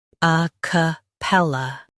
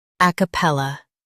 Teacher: In US, stress pel. In UK, stress ac.